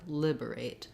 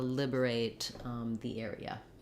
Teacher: We do use the clear A sound, but we hold that fairly short.